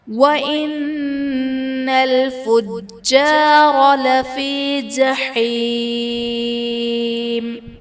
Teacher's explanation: جیم حرف قلقلہ مشدد ہے، تو یہاں پر خوب جماؤ کریں گے